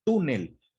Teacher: sabemos al escuchar la palabra, que la sílaba tónica se encuentra en la penúltima sílaba, es decir, la sílaba tú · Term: palabra grave